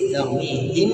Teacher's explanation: ketika sukun ketemu ba ikhfa syafawi, mulutnya ditutup habis